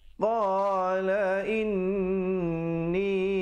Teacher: Qala inni di situ didengungkan wajibul gunnah 2 harakat. Ni dibacakan 4 atau 5 harakat.